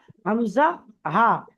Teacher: কণ্ঠনালী অর্থাৎ গলার একদম নিচে থেকে উচ্চারিত হয় হামজা